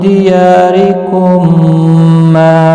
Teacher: میم ساکن کے بعد دوسرا میم مشدد آیا ہے تو یہاں پر ادغام شفوی ہوگا گنہ کے ساتھ پڑھیں گے · را زیر کی وجہ سے باریک پڑھا جائے گا